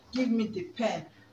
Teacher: now I will stress pen I emphasize pen